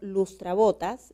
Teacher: Entonces, cuando yo silabeo lustrabotas, la sílaba tónica se encuentra en bo, por lo tanto no requiere de acento ortográfico porque termina en una S, es como una grave.